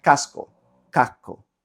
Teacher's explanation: la S se neutraliza y hay una K larga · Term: consonantes largas